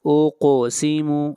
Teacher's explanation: قاف حروف مستعلیہ میں سے ہے، قاف کو موٹا پڑھیں گے اور قاف کے اوپر قلقلہ ہوگا۔ اقسم یعنی آواز کو ہلائیں گے، اقسم پڑھنا غلط ہوگا۔